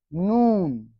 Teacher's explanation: ল ধ্বনির বদলে দন্তের ন ধ্বনির ব্যবহার, তাকে নকারী ভবন বলে।